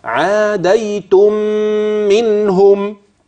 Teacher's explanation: لا، مكان الغنة في هذه الكلمة عند وصلها بما بعدها، وهتجد الغنة في الميم الثانية لا في الميم الأولى